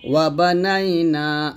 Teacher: ওয়াবানাইনা, নাতে এক লিফ টান দেব, এক লিফ টান হবে